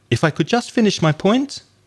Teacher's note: Make the intonation go up. It sounds more polite.